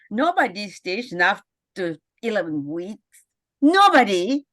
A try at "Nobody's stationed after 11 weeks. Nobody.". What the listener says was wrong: don't rush that last part. Couldn't understand a word you said at the end. What were your lines at the end? Nobody drops out after 11 weeks. Is that what your lines are? I got to understand that.